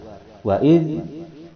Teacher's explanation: ketika membunyikan za tidak ada hembusan napas yang keluar. Wa idz, napas tertutup. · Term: jahrun